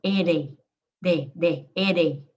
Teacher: So I'm just tapping the tip of my tongue. Ere, ere. Some Americans think it sounds like a D.